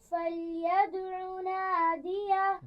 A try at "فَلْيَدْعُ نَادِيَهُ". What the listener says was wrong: دال پر قلقلہ واضح کیجیے. فَلْيَدْعُ.